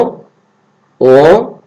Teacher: এটাকে অল্প প্রাণও বলা হবে না, মহাপ্রাণও বলা হবে না, এটাকে বলে নাসিক্য